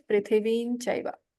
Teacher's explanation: The Anuswara here becomes Nya, that is palatal.